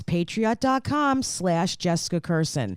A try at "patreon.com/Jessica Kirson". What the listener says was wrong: I think you said patriot.com.